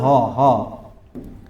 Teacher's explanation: सर ह ह यह ह यही के केवल काकल व्यंजन है ह ही काकल व्यंजन है